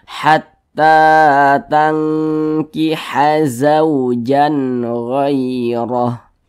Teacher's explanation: ta dibaca panjang, mad tabi'i, panjangnya 2 harokat atau kira-kira 2 ketukan